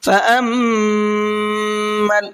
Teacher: میم کے اوپر تشدید ہے تو یہاں پر بھی میم میں غنہ کر کے پڑھیں گے